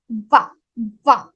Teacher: when we say va, our teeth and lips both are involved here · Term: teeth and lips combination